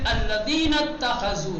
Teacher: تا میں ملا دیں گے اور حمزہ وصل کو سائلنٹ کر دیں گے، کہیں گے الذین اتخذوا، نہیں کہیں گے اتخذوا۔